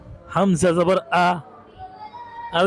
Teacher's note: হামজা হচ্ছে কন্ঠনালীর শুরু হইতে উচ্চারিত হইবে।